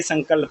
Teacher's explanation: अनुस्वार की बात करें, इसमें सिर्फ उच्चारण इसका सिर्फ नाक से होता है।